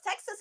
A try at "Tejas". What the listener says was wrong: Tejas. Tejas. You have to make your T softer. Tejas. Not te. Te.